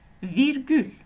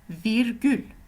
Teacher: Alors, comme vous le voyez, la prononciation est presque la même. C'est juste qu'il y a le R roulé en langue turque.